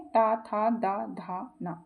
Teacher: ता वर्ग का है मूर्धा, तालु, दंत या ओष्ठ? तो इसका राइट आंसर हो जाएगा दंत।